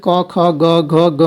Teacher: तो क वर्ग जो है वो कंठ है, यानी क, ख, ग, घ, ग जो है ये कंठ है, यानी इनका उच्चारण जो है कंठ से होता है